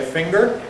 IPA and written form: ˈfɪŋgɚ (finger)